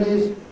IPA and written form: ɪz (his)